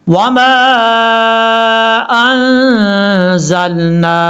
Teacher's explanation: وما انزلنا، میم کے آگے الف الف کے اوپر مد ہے، اس مد کو مد منفصل کہا جاتا ہے اور اس کو دو الف کے برابر آپ نے لمبا کرنا ہے